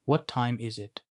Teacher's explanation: What time is it? буюу цаг хэд болж байна вэ? гэх асуултыг хэлэхдээ төгсгөлд нь дууны өнгөө буулгана